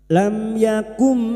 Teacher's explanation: mim sukun bertemu ya idhar syafawi mim Mim sukun dibaca jelas tanpa mendengung